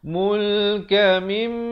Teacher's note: Di sini idgham, di sini wajibul gunnah, wajib dengung. Mim sabdu dua harakat.